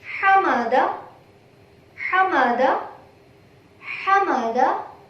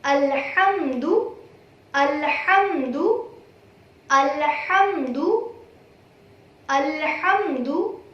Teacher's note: Ha produced from the middle portion of your throat.